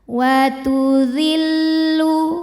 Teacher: li ujung lidah disentuhin ke ujung gigi seri atas. Jadi jangan di belakang gigi, jangan zi tapi zi ke depanin dikit, melet dikit ya.